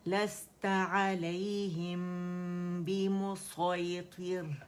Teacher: لست علیہم بمسیطر, لست لس سین میں جو وسلنگ ساؤنڈ ہے صفیر اسے واضح کریں گے, رخاوہ واضح کریں گے, ہمس واضح کریں گے